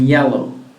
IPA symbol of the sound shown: j